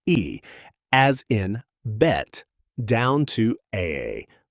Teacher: Keep lowering the tongue and you move through e as in bet down to aa. The low front vowel in bat. One of the most distinctly American sounds, often pronounced with extra tension and a slight glide in dialects from the north and Midwest.